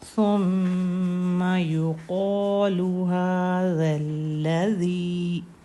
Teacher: ثا میں سین جیسی سیٹی نہیں آتی